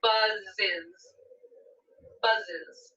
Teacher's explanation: you add an extra syllable okay you had an extra syllable buzz ends with one of our buzzing sounds so i'll add the syllable is onto it